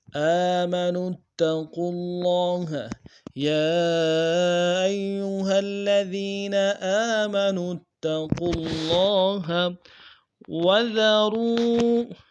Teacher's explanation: قوف کو موٹا ادا کرتے ہوئے لام کے ساتھ ملانا ہے